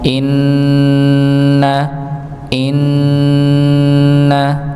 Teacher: Maka sekali lagi setiap huruf nun yang bertasydid maka didengungkan ditahan dengan de dengung.